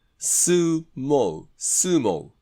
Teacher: アメリカ英語は必ずおって二重母音です。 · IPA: /oʊ/